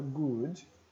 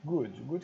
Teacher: temos esse U aqui parece uma letra grega né que é u normal igual do brasileiro como na palavra good curtinho porque não tem dois pontos senão não alongo muito